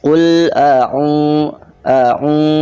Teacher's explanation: Nah, ini karena ada domah menghadapi wawu sukun. Nah, matabi'i itu harus dibaca panjang 2 harokat